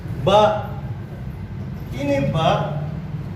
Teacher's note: Asy-syamatain, kedua bibir. Nah, ketika kita mengucapkan huruf ba, maka posisi makhrajnya harus kedua bibir,